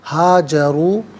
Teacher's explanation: واو مدہ ہے، اسے ایک الف کی مقدار کھینچ کر پڑھیں گے